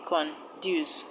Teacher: Conduce is a 2-syllabic word, and the stress will go to the second syllable